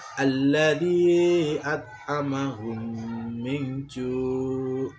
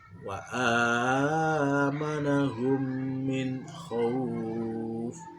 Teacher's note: Cara membacanya adalah memasukkan huruf mim ke dalam huruf mim disertai dengan gunnah sekitar 2 ketukan atau harokat. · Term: idgham mimi